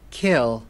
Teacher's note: khi mà bạn phát âm cái từ này, bạn phải nhớ là bật hơi nó ra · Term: âm K bật hơi